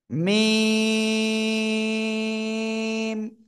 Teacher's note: দুই ঠোঁটের বাইরের অংশ শুকনো জায়গা থেকে আমরা উচ্চারণ করব।